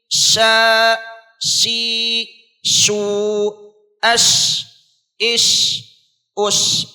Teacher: तो हम यहाँ पर होठों पर काबू रखें, होठों को हरकत न दे, जबान का बीच वाला हिस्सा ऊपर के तालु से मिलने के बाद शीन अदा होता है। जैसे पढ़ना है शीन, श, शी, शू, अश, इश, उश, इस तरह से अदा करना है।